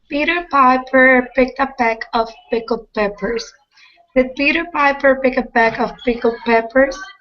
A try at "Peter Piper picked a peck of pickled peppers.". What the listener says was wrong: Excellent. Thank you.